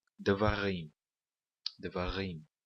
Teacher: devarim nós pronunciamos com o acento na última sílaba. É sempre assim no hebraico bíblico.